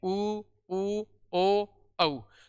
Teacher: इनका उच्चारण करते समय अपने होठों की आकृति या होस्ट की आकृति कैसे हो जाती है? गोल हो जाती है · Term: वर्ताकार स्वर